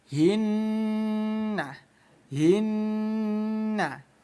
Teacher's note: Nun yang bertasydid ini hukum bacaannya gunnah. Gunnah itu artinya dengung ya. Jadi bunyi nun kita dengungkan 2 ketukan.